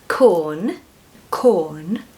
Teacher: Don't pronounce the R in the first syllable.